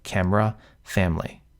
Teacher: camera where that e in the middle is lost camera or family which sounds like it almost has two syllables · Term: vowel Syncopy